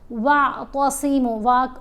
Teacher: واو کو عین سے ملا کر پڑھا، صاد کو ہم نے موٹا پڑھا، میم کو ایک الف کی مقدار جتنا لمبا پڑھا کیونکہ حرف مدہ ہے، پیش کے ساتھ واو ساکن ہے۔